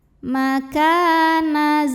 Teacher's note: thi'i karena ada Alif yang didahului baris fathah maka cara bacanya huruf Kaf yang barisnya fathah kita panjangkan dua harakat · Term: Mad thi'i